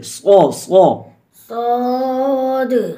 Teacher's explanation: صاد کی سیٹی شروع میں موٹی ہو جائے